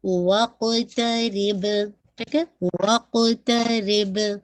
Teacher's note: قاف اور با دونوں قلقلہ کے ساتھ ہے